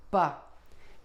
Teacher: For the B, lips are closed